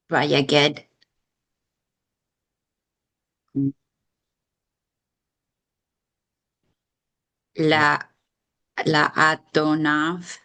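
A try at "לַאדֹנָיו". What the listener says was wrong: Here it's a quiesced aleph. There's no vowel attached to it. So ladonav.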